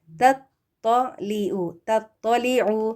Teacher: تا اور تو دونوں ایک ساتھ آ گئے ہیں. تا دیکھیں باریک ہے، تو جو ہے وہ موٹا ہے